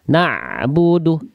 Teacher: Naknya jangan diseret. Naknya langsung masuk ain. Jangan naknya jadi kepanjangan kayak diseret.